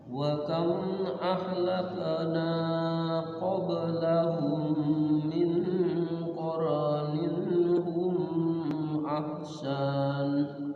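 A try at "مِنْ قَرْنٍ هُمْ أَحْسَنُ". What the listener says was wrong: Iya, humnya jangan ditahan ya. Min qarnin hum ahsan. Jadi ini semua izhar semua itu. Humnya ketinggalan. Hum ahsan.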